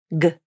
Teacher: The G consonant is a voiced consonant. This means the vocal cords are turned on as you say this sound, and you should feel a vibration in the throat when you say it. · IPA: /g/